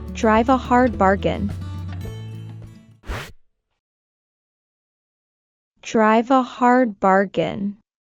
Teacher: link drive and a together for a smooth flow in fast speech